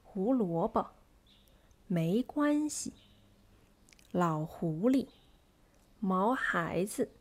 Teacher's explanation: the first syllable is medium stressed the second syllable is stressed and the third syllable is light